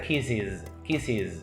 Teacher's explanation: Intenta practicar que esa última S es z, como una vibración, ¿no? Como un zumbido